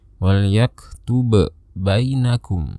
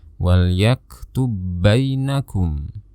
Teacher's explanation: seolah-olah kita hanya mendengar ada satu ba yang bertasydid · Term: idgham